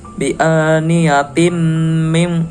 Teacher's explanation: terdapat hukum bacaan idgham bigunah dikarenakan ada tanwin bertemu dengan mim tasjid. Cara membacanya dengung.